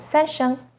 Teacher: Third tone, 三 声, is even lower. It first dips down, then rises.